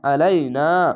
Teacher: জবরের পাশে খালি আলিফ এক আলিফ টেনে পড়বেন